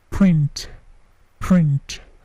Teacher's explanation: Print, P-nya juga tidak terlalu plosif, bukan print, tetapi print, print.